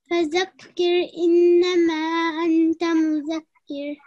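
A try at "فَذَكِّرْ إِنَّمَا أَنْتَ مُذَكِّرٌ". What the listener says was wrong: Again, wasn't prolonged for longer, so just make sure that you do that. But one thing, we have a small thaw, yeah, I just can't seem to highlight that. The small thaw, like, you can see this?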